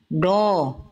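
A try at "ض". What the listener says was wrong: angkat pangkal, jangan diokan ya, jangan monyong. Jadi bukan ujung lidahnya yang ke samping ya, pinggir lidah. Pinggir lidah, bukan ujung lidah yang menempel ke gigi geraham, pinggir lidahnya.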